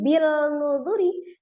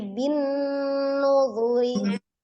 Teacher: Kalau ini kan kasroh, kemudian langsung ditasdidkan ke huruf nun ya, karena nun termasuk huruf syamsiyah. Ya, jadi bacanya bukan bil nuzuri tapi bin nuzuri.